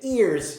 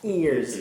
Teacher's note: when you say ears your tongue is laying flat